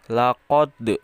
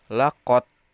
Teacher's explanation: huruf Qalqalah ini harus dibaca dibacanya dipantulkan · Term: Qalqalah sugro